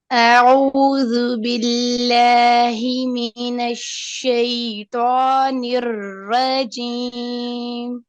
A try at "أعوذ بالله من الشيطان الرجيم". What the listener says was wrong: Do the ra heavier letter. Don't say rajim. Rajim. Ra.